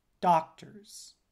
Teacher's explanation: up of doctors the syllable doc and the syllable ters so the stressed syllable doc followed by the unstressed syllable ters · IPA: [('dɑk)(tɚz)]